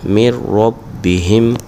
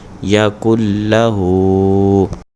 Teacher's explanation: یہ ساری لائن بغیر گنہ کے پڑھیں گے، ادغام بغیر گنہ، کیونکہ را اور لام میں بغیر گنہ کے پڑھتے ہیں